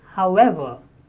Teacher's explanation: However, stress on ever, second syllable.